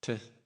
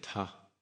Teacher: normal English T, t, then you aspirate it